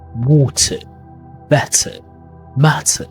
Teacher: Water with a T sound. British speakers use a clear T.